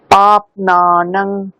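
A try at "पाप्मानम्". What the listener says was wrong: পাপ নানম নয়, পাপ মানম, ময়াকার, এম এ, পাপ মানম।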